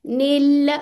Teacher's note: लाम के मखरज पे थोड़ा ठहरे हैं क्योंकि दो लाम है